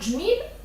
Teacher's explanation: і дріб д є однаковими звуками але в слові джміль немає звука д є лише один звук Дж